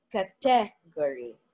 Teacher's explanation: So most native English speakers put the stress on the fourth syllable. But Filipinos say category, right? So they put the stress on the second syllable.